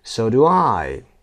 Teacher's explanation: So و I استرس گرفته و شما auxiliary رو تقریبا نمیشنوید.